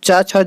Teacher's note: तो चा, छा, जा ये सब क्या है? ये तालव्य वर्ण है जो तालु की सहायता से बोले जाते हैं